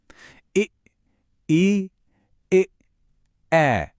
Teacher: सबसे पहले है अवर्तुल। इसमें होठ गोल होने के बजाय फैलते हैं। जैसे एक हल्की सी स्माइल में।